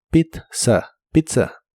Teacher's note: La primera Z se pronuncia como T y la segunda Z como S.